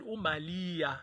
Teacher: you have many isiZulu speakers who speak about umalia. So the R is taken out.